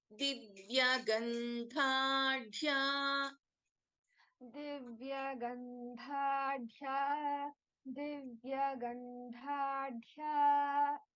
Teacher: in Divya Gandhadhya, dha is a Mahaprana, and then we have dha, which is a Mahaprana in dhya